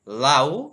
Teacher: লাউ শব্দে দুটো স্বরধ্বনি আছে, আ এবং উ। এখানে আ হচ্ছে পূর্ণ স্বরধ্বনি এবং উ হচ্ছে অর্ধ স্বরধ্বনি। দ্বি স্বরধ্বনি।